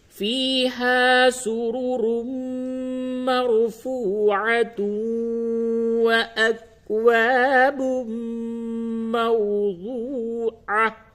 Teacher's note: فیہا سرر مرفوعہ، وقف کی حالت میں اس جگہ پہ ادغام نہیں ہوگا، اور اگر آپ وصل کرتے ہیں یعنی 13 اور 14 آیت دونوں ملا کے پڑھتے ہیں تو پھر اس جگہ پہ بھی تنوین کے بعد آگے واو ہے، ادغام مع الغنہ ہوگا